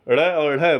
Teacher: जब आप इनका उच्चारण करेंगे सॉरी, तो आपकी जीभ बाहर की तरफ फेंकाएगी। ड़ और ढ बोल के देखिएगा, ऐसा लगेगा जैसे झटका दे रहा है जीभ में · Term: उत्क्षिप्त व्यंजन